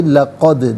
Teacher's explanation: دال ساکن تو ہے لیکن حرف قلقلہ ہے تو آواز لوٹتی بھی محسوس ہونی چاہیے